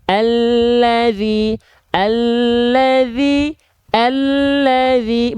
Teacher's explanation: lam itu dilafalkan dari tepi lidah bagian depan yang kanan, lalu tepi lidah bagian depan yang kiri. Bukan seluruh samping lidahnya, bukan. · Huruf lam itu dilafalkan dari tepi lidah. Tepi lidah itu artinya samping lidah. Tepi lidah itu artinya adalah samping lidah atau sisi lidah.